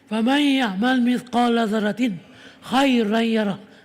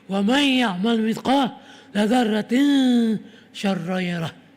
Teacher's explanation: Di situ ada hukum izhar, ada hukum idgham malunah. Faman ya'mal mithqala dzarratin khairan yarah. Tak dengung. Tapi wa man ya'mal mithqala dzarratin syarran yarah. Baru dengung.